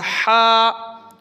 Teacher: ہا حلق سے پڑھیں گے، حلقی ہے حلق، نیچے جو حلق ہوتا ہے وہاں سے ہا، جیسے گلہ صاف کرتے نا ہا کرتے ہیں ویسے آپ کریں ہا ہا۔